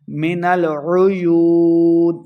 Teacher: واو مد ہے، 2 حرکات اس کو لمبا کریں گے اور آخر پہ ہم نے وقف کر دینا ہے۔